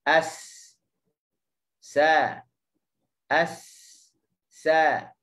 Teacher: keadaan lidah apabila sebut huruf sin, mula-mula lidah kena berada dekat dengan gusi bawah.